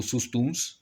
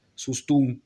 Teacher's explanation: il y a deux possibilités, c'est on conserve le S ou pas